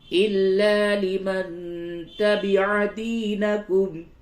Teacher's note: نون ساکن کے بعد تا ہے اخفا کیجئے